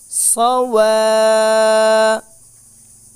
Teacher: ওয়াওটা উচ্চারণ করব দুই ঠোঁট গোল করে